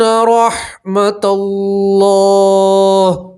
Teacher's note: آخر میں صرف ہا کی آواز آئیں گی